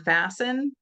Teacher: And for ease of articulation, so in order to say things faster and easier, we'll drop certain sounds. So like in the word fasten, like fasten your seatbelts, we don't really hear the T, but it's there because otherwise it wouldn't have the same meaning, right?